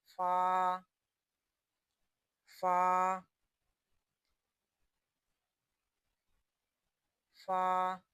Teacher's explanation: فا ہونٹوں سے ادا ہوگا